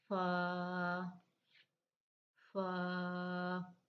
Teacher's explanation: हम फ जो है व अपने तर हिस्से होठों के तर हिस्से से अदा करेंगे · اوپر کے دانتوں کے کنارے اور نچلے ہونٹ کے تر حصے سے، اوپر کے دانتوں کا کنارہ اور نچلے ہونٹ کا تر حصہ.